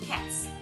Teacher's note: The word cats, the T sound is voiceless.